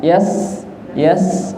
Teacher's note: karena ro sukun sebelumnya sukun sebelumnya fathah maka rnya tebal